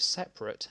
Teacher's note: For most speakers, the adjective 'separate' has two schwa vowels in a row!